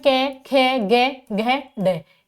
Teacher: क वर्ग में क ख ग घ ड इनका उच्चारण स्थान कंठ है